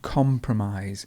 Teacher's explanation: notice how the stress moves to the beginning